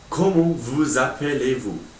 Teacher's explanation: between the vous and the appelé, there's an S which actually turns into a Z because it's got a vowel after it. Words in French have to link up if they've got a vowel after them, except for some exceptions.